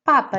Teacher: relação a p o papa tem duas sílabas é um dissílabo a sílaba tónica já não vai estar na última sílaba vai estar no penúltimo ou segunda contar do fim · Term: palavra grave